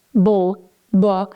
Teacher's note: it's a very, very strong b sound. There's a lot of vibration.